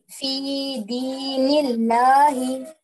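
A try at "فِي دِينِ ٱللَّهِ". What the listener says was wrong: नहीं, फिर थोड़ा मोटा हो गया लाम, लाम थोड़ा बारीक होना।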